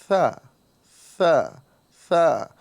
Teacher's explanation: ساتھ ہی ساتھ یہ ثا نظر آ رہا ہے، ثا کے اندر ہمیں سیٹی کی آواز نہیں نکالنا ہے، سین کی طرح سیٹی یہاں پر نہیں ادا ہوگی، بلکہ صرف ہمیں ہلکی سی ہوا نکالیں گے اور زبان کا یہ سرا اور اوپر کے دانتوں کے کنارے سے اس کا مخرج ہے، اور ہم یہیں سے اس کی آواز نکالیں گے ثا ثا ثا۔